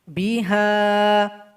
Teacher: Di sini ada waqaf shad lam. Kalau sahabat Al-Quran berwaqaf, ha ini dipanjangkan 2 harokat saja. Biha. Tapi kalau seandainya berwasal, karena dia berjumpa dengan alif, dia berubah menjadi mad jaiz, panjangnya 5 harokat.